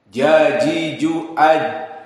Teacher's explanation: Dan jim yaji dalam keadaan kasrah telah kita ketahui di pelajaran yang lalu sifatnya syiddah. Maka jika kita sukunkan jim, tidak ada keluar suara lawannya dari rokhawah.